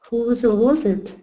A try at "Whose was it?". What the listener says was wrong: Good, good.